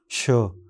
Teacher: इस अक्षर का उच्चारण तालू के पास जीभ रखकर किया जाता है और हवा झटके से बाहर निकलती है